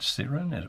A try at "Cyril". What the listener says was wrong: It's Cyril with an L.